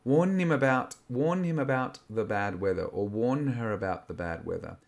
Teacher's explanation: So we soften the H's and we make this n sound to create a transition.